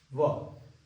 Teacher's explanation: दांत और ओष्ठ का मिश्रण है जो है व। अब जितने भी क्वेश्चन है आपको इसमें से बाहर नहीं होने वाला, ये बात आप याद रखोगे।